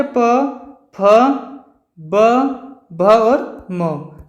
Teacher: प वर्ग का उच्चारण होता है आपका ओष्ठ से